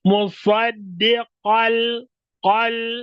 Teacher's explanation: dibacanya diidgham dileburkan tapi tanpa gunah tanpa gunah maksud tanpa masuk ke dalam hidung